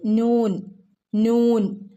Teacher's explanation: നൂൻ, നാവിൻ്റെ അറ്റം മേലെ മുൻപല്ലുകളുടെ മുരട് ഭാഗത്താണ് തട്ടുന്നത്.